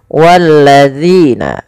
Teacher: Walladzina, dan panjangkan zi sepanjang 2 harokat karena ia ada bacaan mad tabi'i